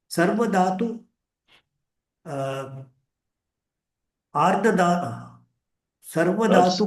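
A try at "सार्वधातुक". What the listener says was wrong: Not Sarva, not Sarva it is. There is no Sarva.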